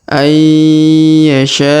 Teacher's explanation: Huruf nun sukun bertemu ya maka ditahan dan ditekan. Huruf nun sukunnya menghilang melebur ke huruf ya.